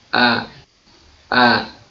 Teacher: jadi suaranya akan terasa dari tenggorokan paling jauh dan cukup kita senyum kan untuk membunyikan huruf tersebut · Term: huruf hamzah